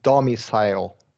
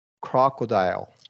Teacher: primary stress on the first syllable and secondary stress on the IL syllable so this middle syllable is on unstressed if there's three syllables